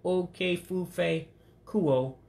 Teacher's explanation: you do have two vowels coming together off of two words, so you drop the I.